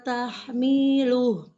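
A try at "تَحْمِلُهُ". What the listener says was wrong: Tahmiluh, mi-nya pendek. Tahmiluh. tahmiluh. Enggak miluh, tapi miluh. Mi-nya pendek.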